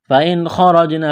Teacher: نون ساکن کے بعد خا ہے، حروف حلقی ہے تو یہاں پر غنہ نہیں کریں گے، آواز ناک میں نہیں چھپائیں گے ، را کے اوپر زبر ہے، را کو موٹا کرنا ہے،